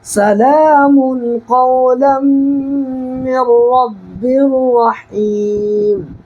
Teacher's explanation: دیکھیں یہاں پر دو پیش کی تنوین کے بعد حروف اخفا کے 15 حرفوں میں سے بڑی قاف آ رہا ہے نا، تو یہاں پر بھی نون کی آواز کو ناک میں چھپا کر کے پڑھنا ہے